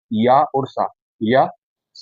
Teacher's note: या और स ध्वनि आपकी आती है तालव्य के अंतर्गत